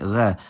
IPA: ʁ̞